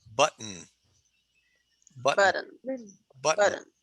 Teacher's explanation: No, I don't say t. I don't say the t at all.